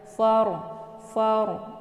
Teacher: Karena fa ini adalah harokat fathah, maka ra ini dibaca tebal dengan cara ujung lidahnya terangkat ke langit.